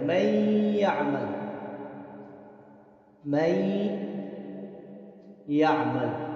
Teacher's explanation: یہاں پر ادغام بالغنہ ہو، ادغام بالغنہ ہوگا، یعنی یہ نون جو ہے یہ یا کے ساتھ مل جائے گا اور یا مشدد بن جائے گا، یا کے اوپر شدہ آ جائے گا، تو نون گویا کہ ختم ہو گیا۔